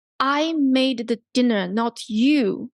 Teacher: I emphasize I and you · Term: sentence stress